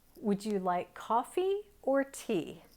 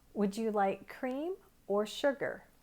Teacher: and in between those two choices we have or and so everything before or has a rising intonation and everything after it has a falling intonation